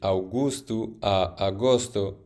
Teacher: la U en la primera sílaba desaparece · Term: eliminación vocálica